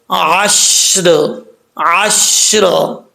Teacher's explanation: آئین کو پڑھتے وقت آئین کا ساؤنڈ آنا چاہیے، حمزہ کی آواز نہیں آنی چاہیے۔ آئین کے بعد شین ہے، عشر نہیں پڑھنا، عشر پڑھیں گے تو شین میں قلقلہ ہو جائے گا۔